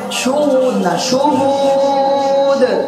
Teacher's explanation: শুহুদ নাকে যাবে না, নাকে শুধুমাত্র গুন্নার আওয়াজটা যাবে।